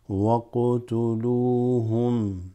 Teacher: The waw extends the lam just slightly.